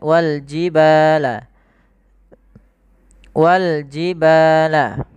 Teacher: Kemudian pada hafal ba ada mad thabi'i panjangnya dua harakat